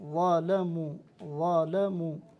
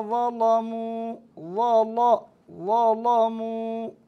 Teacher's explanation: إذا قرأنا لقالون أو لحفص نرقق اللام، ظلموا ظلموا. أما إذا قرأنا لورش فنغلظ اللام أو نفخمها، والتغليظ والتفخيم لفظان مترادفان، ولكن الاصطلاح على أن التفخيم للراء والتغليظ لللام، فنقول لام مغلظة وراء مفخمة، ويصلح العكس.